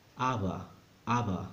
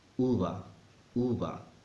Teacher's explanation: when either the B or the V are between vowels, sounds softer.